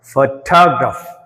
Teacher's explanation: ఫోటోగ్రాఫ్ ఫోక్ ఎక్కువ stress ఇచ్చాం. అలా పలికితేనే ఎదుటివాడికి అర్థమవుతుంది, అంటే ఫారినర్స్కి అర్థమవుతుంది.